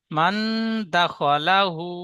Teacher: লা বলে একটু টান দিয়েছেন লামটি টান হবে না